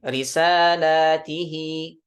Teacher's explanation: di lamnya ditambahkan alif, lamnya jadi panjang. Jadi risala, kemudian mengkasrahkan huruf ta, ya, dan mengkasrahkan huruf ha dengan dipanjangkan. Ada ya di setelah ha-nya. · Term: mad silah